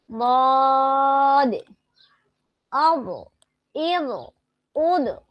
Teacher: এখন আমি জিহ্বার গোড়ার কিনারা এখন দুই পাশ দিয়ে পড়বো, দেখি কোথায় কিভাবে লাগে। জিহ্বার গোড়ার কিনারা উপরের মাড়ির দাঁতের গোড়ার সঙ্গে লাগিয়ে বদ অব এব ওদ, বদ একটু মোটা করে, বদ বদ অব এব ওদ, বদ বদ অব এব ওদ।